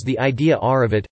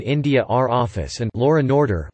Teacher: many speakers of received pronunciation frequently intrude an epenthetic r at word boundaries, especially where one or both vowels is schwa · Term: intrusive r